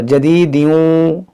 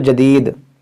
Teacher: अगर मिलाकर पढ़ेंगे तो इदगाम होगा, जदीदियूं, वक्फ करेंगे तो जदीद।